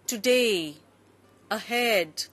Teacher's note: two syllable words where the stress is on the second syllable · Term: stress on the second syllable